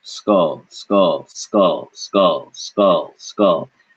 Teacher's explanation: you shouldn't feel any air right when you say the K in skull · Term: K with no air